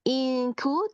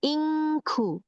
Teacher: Karena dia jauh dari makhraj nun, sehingga penyebutannya di sini NG-nya sangat jelas. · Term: ikhfa hakiki